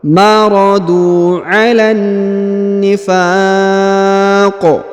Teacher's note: huruf qaf yang di ujung kita sukunkan, maka kita qalqalahkan ya, atau kita pantulkan karena berharokat sukun